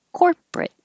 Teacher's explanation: we don't say the middle o r it just gets squished out · if you say corporate by itself you hold the t